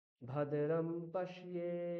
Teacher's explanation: ভদ্রম নিচে বললাম, পশ্যেটা উপরে উঠিয়ে দিলাম।